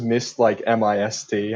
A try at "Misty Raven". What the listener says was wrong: It's actually pronounced Misty Raven. You have to make sure to overpronounce the E. Misty